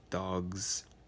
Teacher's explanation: g since that's the last sound before the s and so the s turns into its vocalized version z to conform to the g that's coming before